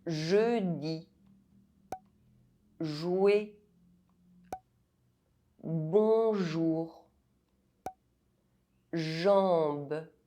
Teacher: Inside French words, J is pronounced [ʒ]